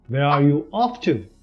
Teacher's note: notice the falling tone of voice since this is an information question not a yes or no question